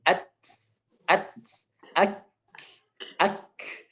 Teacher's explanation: Kaf dan ta itu mengandung angin, mengandung nafas. Jadi ketika tertutup, kemudian dibuka, maka keluarlah angin. At, ak. Kenapa yang keluar angin?